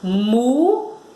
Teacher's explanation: Vejam que a gente pronuncia a sílaba mu com mais força, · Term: sílaba tônica